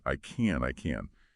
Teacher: Now for I can, in this sentence, can is an auxiliary verb and it's usually unstressed. So we don't say a strong can, it gets reduced, often sounding like kin.